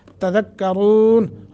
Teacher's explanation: افلا تذکرون، تذکرون، دال، تذکرون، تذکرون نہیں ہے، زا نہیں ہے، دال، تذکرون، را کو موٹا کر کے پڑھیں گے